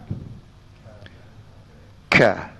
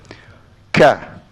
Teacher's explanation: Tekan ka dan ada angin. Ka. Ada syiddah dan ada hamas.